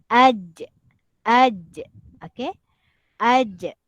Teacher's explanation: huruf Jim ini dia sedikit kena kepada ditekan kepada lelangit atas